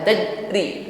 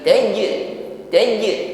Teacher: pada makhraj huruf ta diiringi dengan dengung yang ringan tajri tajri Jim sukun juga memiliki sifat Qalqalah maka dipantulkan ya jangan ditahan